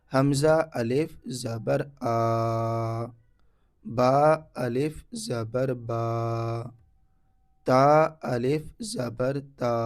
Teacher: सब में अलिफ से पहले ज़बर है, इस वजह से हरूफ मद्दा यहाँ पर अलिफ है। थोड़ा खींच करके पढ़ना है। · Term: अलिफ मद्दा